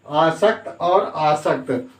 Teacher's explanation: शब्द के उच्चारण में केवल जो है दंती सा और तालव्य सा, दंती सा और तालव्य सा में अंतर है।